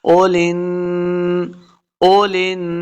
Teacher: لام کو نون کے ساتھ ملا کے پڑھنا ہے غنہ کے ساتھ